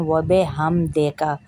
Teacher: وَبِحَمْدِکَ، و بے نہیں ہے، با زیر بی ہوتا ہے، اور دال زیر دی ہوتا ہے، دال زیر دے نہیں ہوتا